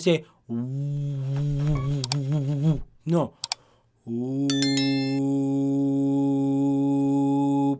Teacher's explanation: When the wow has a sukoon, it just passes through the makhraj of the wow without pressing on the sound, without any emphasis on the makhraj of the wow. · the sound will pass through the lips, the same makhraj of the wow, but without any pressing on the sound, without any emphasis on the sound. So, ooh, I say, ooh, no, ooh, passing through the same makhraj of the wow, but because when the ya has a sukoon, it just passes through the makhraj of the ya without any pressing or emphasis on the sound. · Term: mad letters, mad